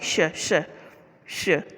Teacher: जैसा कि हम जानते हैं कि ऊष्म का अर्थ होता है गर्म होता है, और ऐसे वर्ण जिनका उच्चारण करते समय वायु मुख से रगड़ खाकर ऊष्मा पैदा करती है, यानी उच्चारण के समय मुखों से गर्म हवा निकलती है। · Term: ऊष्म व्यंजन